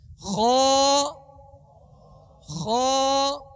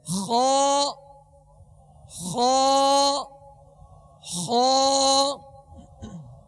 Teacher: ہونٹ بھی گول نہ ہو اور یہ حروف بھی موٹے پڑھے جائیں، ہونٹ بھی گول نہ ہو، یعنی خو ایسا نہیں پڑھیں گے، خو یہ، کیونکہ اگر اس طرح کریں گے تو اس سے حرف کی جو اصل حیت ہے وہ ختم ہو جائے گی، جو اصل اس کی ادائیگی ہے وہ ختم ہو جائے گی۔